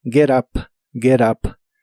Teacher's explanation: y recuerda que la T de get en inglés americano se acostumbra a pronunciar como R cuando la palabra que le sigue empieza con vocal, como la palabra up, get up, get up.